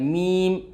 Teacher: जब आप मीम कहेंगे दोस्तों तो आपको खुद एहसास होगा कि हमारे होंठ चिपक रहे हैं और हमारे होंठ का वो हिस्सा चिपक रहा है जो सूखा हुआ होता है।